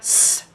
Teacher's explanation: Another example, when we produce s, the tongue comes close to the alveolar ridge. Air passes through a narrow gap. Friction happens. We hear s. So articulatory phonetics studies the mechanism of production.